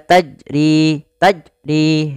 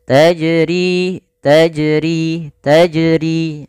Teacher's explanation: Maka bagaimana yang benar adalah dia tidak menambahkan hamzah dan juga dia dipantulkan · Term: qalqalah